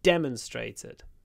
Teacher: she demonstrated stress on the first syllable